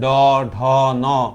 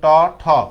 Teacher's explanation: ঘোষ, মানে এগুলো উচ্চারণ করার সময় আমার কণ্ঠ অনুরণিত হয়। যেমন দেখেন ড, ঢ, ন, কিন্তু ট, ঠ এগুলাতে কিন্তু আমার এখানে কাঁপে না।